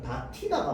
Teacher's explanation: 디귿이랑 히읗이 만나서 티가 되는 거거든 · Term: 거센소리